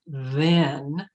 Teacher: with th i wouldn't stick their tongue out between their teeth some words have th voiced with the throat vibrating